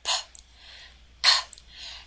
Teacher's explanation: So if you place your hand in front of your mouth when you say that sound, p, p, you should feel all of a sudden a gust of air coming out after you release your lips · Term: stop